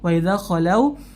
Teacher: waw sukun sebelumnya harokat fathah, maka lin dibaca lembut